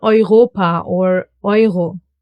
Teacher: E-U. And it gets pronounced as Oi. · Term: diphthongs